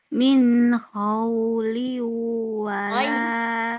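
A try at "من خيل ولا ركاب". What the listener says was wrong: Min khaydin, bukan min khaw. Min khaydin. Min khaydin. Min khaydin.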